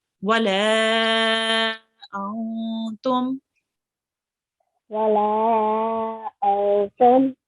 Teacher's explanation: we have the lam here, which carries a medium long stretch. So this will be longer than 2 seconds, and the meme will be longer than 2 seconds.